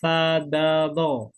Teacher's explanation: Ujung lidah bertemu ujung gigi depan yang atas